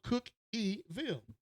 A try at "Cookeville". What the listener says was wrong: No, you don't pronounce the E. Cookie is spelled I-E.